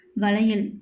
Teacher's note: வளையல் இச்சொல்லில் ஐகாரம் ஒன்றை மாத்திரை அளவில் குறைந்து ஒலிக்கிறது. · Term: ஐகார குறுக்கம்